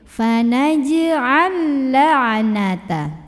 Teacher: lam yang sukun lebur ke lam kedua. Jangan ditahan ya. Masuk langsung fokus ke lam kedua seperti bertasydid. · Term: idgham mutamatsilain